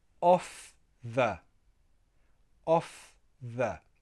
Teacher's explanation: If you have off the, for example, it fell off the table, no, you would have to pronounce that F.